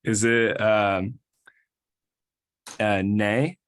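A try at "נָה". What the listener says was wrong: Okay, but the vowel is ah, so it will be. No, this vowel again is ah, so it will be,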